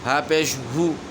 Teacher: ہو کو آدھا کریں گے تو آواز ہو جائے گی ہو، یعنی پیش آپ نے ہونٹ گول کرنے لیکن آواز کو کھینچیں گے نہیں، اس کو آدھا کر لیں گے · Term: آدھے واؤ کی آواز